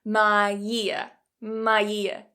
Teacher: Here what we're adding is a /j/ sound to the beginning, so we've got "my ear" "my ear", so yes it does sound like "my year". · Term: connected speech